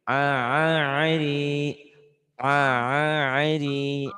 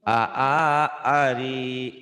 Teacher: Di tenggorokan. Jadi kayak keselak. Kalau yang biasa kayak di luar A.